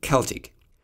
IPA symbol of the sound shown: k